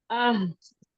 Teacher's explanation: गोल वाला हा, हलक का सबसे नीचे वाला हिस्सा